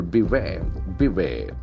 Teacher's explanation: accent falls on the second syllable